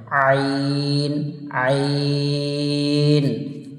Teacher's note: গলার কণ্ঠনালী থেকে এই আইনটা উচ্চারণ হবে